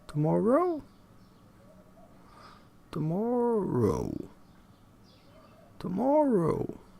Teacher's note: Produced with a rising, falling intonation on tomorrow.